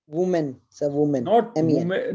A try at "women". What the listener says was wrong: Not woman. It is pronounced women. See, spellings are WOMEN, but it is pronounced women. So be careful that when you are saying singular, woman, when you are saying plural, women.